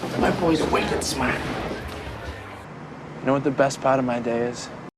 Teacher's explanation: people from Boston often don't pronounce their R's